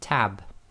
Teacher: B in the word tab doesn't have its own vowel after it, but it joins to the ta sound before it. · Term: sukoon